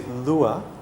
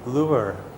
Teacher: in Australia we say Lua we don't pronounce the R that in America they would say lure and they would pronounce the R